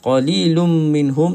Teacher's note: tanwin bertemu dengan huruf mim idgham maal ghunnah. Tutup mulut sahaja.